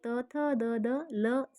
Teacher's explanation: ಇವು ಹಲ್ಲುಗಳ ಬಳಿ ಹುಟ್ಟುವ ಅಕ್ಷರಗಳು ಇವುಗಳನ್ನ ತಾಲ ದಂತ್ಯ ಅಕ್ಷರಗಳು ಅಂತ ಕರೀತಾರೆ ಉದಾಹರಣೆ ತ ಥ ದ ದ